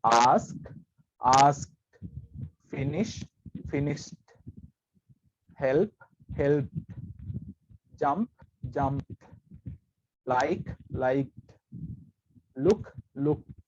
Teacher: ed තමයි එකතු වෙන්නේ past tense එකට යද්දී. හැබැයි මේ past tense එක pronounce කරද්දී ed sound එක අපි pronounce කරන්නේ t විදිහට. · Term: t sound